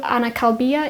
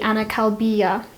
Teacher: every time that we add a possessive suffix to a case vowel our case vowel is lengthened